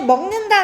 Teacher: 기억에 기억이 있는데 기억이 뒤에 오는 니은의 영향을 앞으로 이렇게 거꾸로 받은 거죠. 어 그래서이 기억이 이응으로 변하는 즉 비음으로 변하는 것을 비음화라고 한다